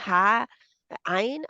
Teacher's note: حلق کے درمیان سے رگڑ کے نکلتی ہے ان کی آواز. اور پھر یہ ہے ذرا سی انگلی اپنی رکھیں دبائیں تو وہاں پہ حلق کے درمیان کو، تو وہاں سے نکل آتی ہے آواز آسانی سے.